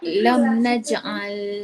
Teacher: Mim mati bertemu selain mim dan ba tak boleh dengung. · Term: izhar